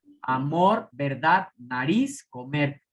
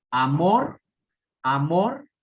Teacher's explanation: Fíjense el acento cómo va al final en la última sílaba.